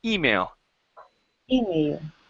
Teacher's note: okay good uh here instead of uh it being email okay the stress is actually at the very beginning